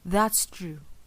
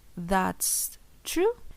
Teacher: full statement versus reservation. We have fall versus fall and raise intonation.